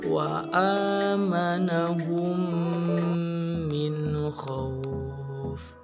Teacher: Jadi yang dimaksud dengan idgham mithlain atau disebut juga idgham mimi adalah mim yang pertama dan yang mim kedua. Cara baca hukum yang mim pertama dimasukkan ke dalam mim yang kedua, jadi dileburkan dengan jelas.